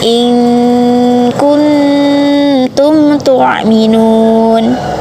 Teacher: In kuntum tu'minun. Terdapat kaidah bacaan ifa hakiki sebab nun sukun bertemu huruf kaf dan ta jadi dibaca dengung